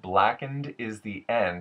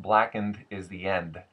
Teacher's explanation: D's and the T's at the ends of the words go more to the front of the mouth, even past the front teeth. So, typically in standard American, we would have the duh sound and the t sound happening just behind the front upper teeth.